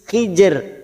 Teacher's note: Hijr, dan ini ada huruf ro mati karena waqaf, didahului huruf sukun yang huruf sebelumnya berharokat kasroh, namanya ro tarkik, ro yang dibaca tipis dengan posisi bibir kita tersenyum meringis. Hijr, maka huruf ro ini tetap terbaca dengan cara melunakkan kedua huruf ini, yaitu huruf jim dan huruf ro.